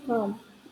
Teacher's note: Penjelasannya mirip dengan far, kombinasi huruf A di beberapa kata menghasilkan suara vokal panjang A, huruf I dalam calm, huruf L dalam calm tidak terlalu terdengar. Cara bacanya calm.